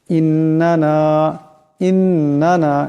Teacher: এখানে নুন মুশাদ্দাদ, নুন মুশাদ্দাদকে একালি পরিমাণ গুণনা করিয়া পড়তে হবে